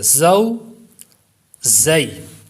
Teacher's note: زا حروف صفیریہ میں سے ہے. جب اس کو پڑھیں گے تو سیٹی کی آواز بھی پیدا ہوگی. اس کو تھوڑا سختی سے بھی پڑھیں گے.